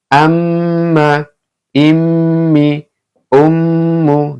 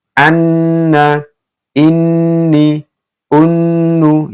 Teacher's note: mim sama Nun yang bertasdid ya dibaca mendengung